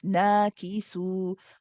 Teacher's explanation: we have the fatha, the mad alif here, which is 2 counts again.